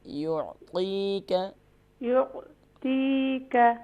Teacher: یعطیک میں یا کے بعد عین ہے اور حمزہ کا ساؤنڈ پیدا نہیں ہونا چاہیے